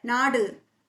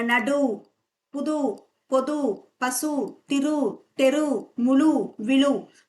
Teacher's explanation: நெடில் தொடர் குற்றியலுகரம். நாடு, இதுல உகரம் குறையும்.